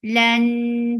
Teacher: Lan for fatha upon jaws and then attach with noon. Noon will get sifa of gunna, and this gunna is akmal, so keep the sound in your nose for a longer time.